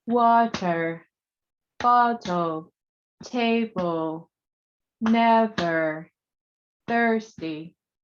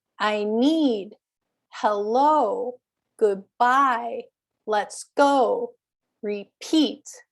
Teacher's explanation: It starts with an unstressed syllable and then it goes to the stressed syllable.